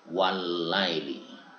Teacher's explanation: Nanti seperti adanya lam bertemu lam, contohnya lailun ketika dimasuk al menjadi al lail, lam mati bertemu lam ya. Sehingga dibaca walaili seperti seolah-olah lamnya hanya satu bertasydid.